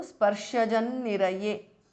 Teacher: Niraye. The sparshajam ends in an anuswara. The next word starts with na. Niraye. So the anuswara changes to n. So sparshajan niraye because of sandhi.